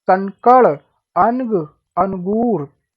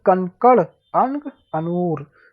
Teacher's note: ये स्वर के बाद आने वाला व्यंजन है जिसकी ध्वनि नाक से निकलती है